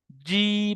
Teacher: জীভের মাঝখান এবং তার বরাবার উপরের তালুর সাথে লাগিয়ে উচ্চারিত হয়